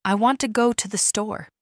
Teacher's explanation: in this sentence want and store are stressed and the other words are said quickly and softly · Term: sentence stress, Sentence stress